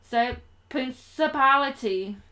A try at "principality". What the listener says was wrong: Yeah, good enough. You need to really work on that second L.